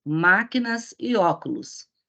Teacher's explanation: Então, essa palavra é uma palavra proparoxítona, pois possui o seu acento tônico na antepenúltima sílaba.